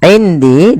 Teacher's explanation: Di sini ada bacaan ikhfa maka suara nunnya samarkan kepada huruf dal